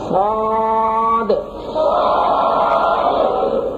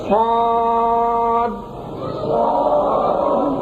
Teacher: صاد تیز آواز کے ساتھ، اور آخر میں جو دال ہے اس کو ہلا کر پڑھنا ہے، قلقلہ کر کے